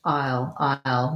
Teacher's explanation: if it gets reduced, it's just I'll, maybe a little bit of little less diphthong there